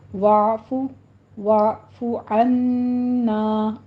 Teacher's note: پھر واعفو میں عین کو وسط حلق سے ادا کرنا ہے، اس پر قلقلہ نہیں کرنا، وعفو نہیں کہنا، جھٹکا بھی نہیں، وعفو بھی نہیں کہنا، ذرا سا منہ کھولیے تاکہ آئین اپنے وسط تک پہنچ جائے.